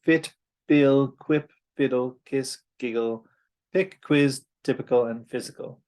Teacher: it is high and front and unrounded, just like E, but it is lax. So E, you can open your mouth a little bit.